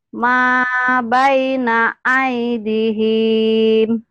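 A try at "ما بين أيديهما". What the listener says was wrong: Mana aidihim? Dinya panjang. Ma baina aidihima.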